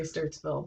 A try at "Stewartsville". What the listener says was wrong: Because you're not pronouncing the W. Stewartsville. I'd say Stewartsville.